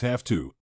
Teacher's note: 'Have' in this case is pronounced as 'haf' and is influenced by the letter 't' in 'to.' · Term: regressive assimilation